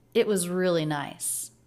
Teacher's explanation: it's not really a pause because it's just a quick little lift in the line as the energy keeps going forward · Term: stop T